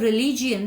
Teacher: in the word रिलीजियन the second syllable रिलीजियन, ली पर stress किया गया है